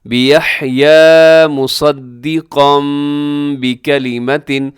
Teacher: جب بھی تنوین کے بعد یا نون ساکن کے بعد با آتا ہے تو اس کو ہم میم کے ساتھ چینج کر کے پڑھتے ہیں، اسے اقلاب کہا جاتا ہے۔